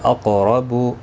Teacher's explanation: قاف حروف مستعلیہ ہے، پر پڑھنا ہے، ساکن بھی ہے، اس پر قلقلہ بھی ہوگا. رو زبر کی وجہ سے پر پڑھا جائے گا.